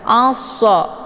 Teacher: dan untuk alif lamnya tidak lagi dibaca. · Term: idgham syamsiyah